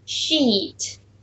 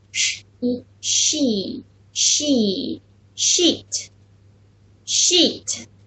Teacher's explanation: 它有一个清辅音sh和一个长元音▁e